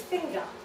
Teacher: in most accents in british english however unfortunately not my own this word is produced without its word final r